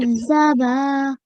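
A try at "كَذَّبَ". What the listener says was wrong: And sometimes what happens, while we hear the sound in front of us, we do get confused. So if you take the Z sound out of it totally and say, read it as kadha, kadhaba.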